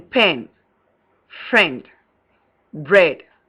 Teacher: front, half open, lax, and unrounded, as in pen, friend, bread